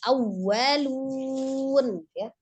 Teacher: tekankan hanya di waw, tasdidnya ditekankan ya